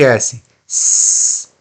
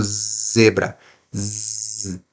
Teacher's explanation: O desvozeado é o som do S e o vozeado é o som do Z.